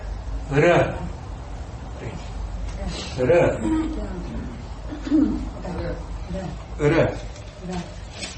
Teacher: Em sânscrito o R só tem um som, ele é cerebral